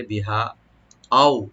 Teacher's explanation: হা এখানে মধ্যে মুনফাসিল তিনালি করে টানবো আমরা এখানে